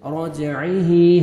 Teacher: را کی عمر فتح ہے, را کو موٹا کرنا ہے, اور جیم پہ قلقلہ ڈبل ساؤنڈ آئے گا راجعی. عین کو اپنے صحیح مخرج سے ادا کرنا ہے تاکہ حمزہ میں ساؤنڈ نہیں جانا چاہیے. راجعی, ہا کو 1 سیکنڈ آپ نے کھینچنا ہے, کسرہ یا صغیرہ ہے.